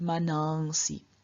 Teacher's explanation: The only difference here is that in front of s, the nasal does not appear as a full nasal, but it appears as an anuswara, and also the a that precedes the s, so we have the stem as, this short a is lengthened, so we get manansi.